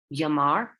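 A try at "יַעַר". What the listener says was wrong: That's an ayin. So it's just a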